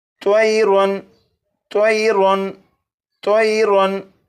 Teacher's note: इस लफ्ज़ के आखिर में और रा के ऊपर 2 ज़बर हैं, यानी तनवीन है। तनवीन के बाद हमज़ा है और हमज़ा हरूफ़ हल्की में से है, इसलिए तनवीन पर गुन्ना नहीं करेंगे